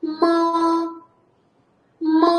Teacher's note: Birinchi ton. Chapdan o'ngga qarab uzluksiz bir tekis talaffuz qilamiz.